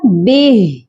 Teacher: یہاں پر ہم ہا کو ساکن کریں گے، اس کی کھڑی زیر کو نہیں پڑھیں گے، یہ پڑھا جائے گا بہ۔